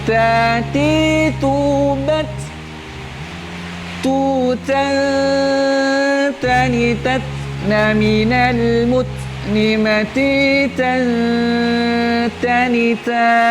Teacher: Huruf ta memang dia memiliki sifat hamas, tapi tidak besar.